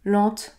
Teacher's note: on va effectivement prononcer les lettres e nt à la fin et on va donc prononcer la voyelle nasale en · dans la dernière syllabe il y a e nt en fin de mot ce n'est pas un verbe conjugué il faudra donc toujours prononcer en